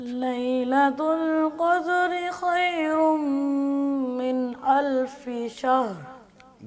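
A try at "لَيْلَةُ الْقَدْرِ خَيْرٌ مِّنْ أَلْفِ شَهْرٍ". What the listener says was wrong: دال اتنی کلیئر نہیں ہے، دال پہ صحیح طرح جھٹکا دے کے یعنی کہ قلقلہ کر کے اس کو پڑھیں۔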